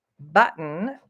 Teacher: we say button like we say Mitten and like we say kitten we have that glottal T sound there